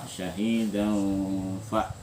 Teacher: Nah, sekarang karena dan tanwin ketemu fa, maka di nunnya disamarkan, artinya tidak dijelaskan sejelas-jelasnya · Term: ikhfa